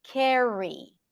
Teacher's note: as long as the r is before a vowel it's a strong R and then you want to make sure that you round your lips and that's like your strongest R carry